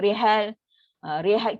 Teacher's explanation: Apa maksud imalah ni? Memiringkan atau mensendengkan, mencondongkan sebutan bari atas, fathah bari atas ni menghala kesebutan kasrah bari bawah pada kadar yang banyak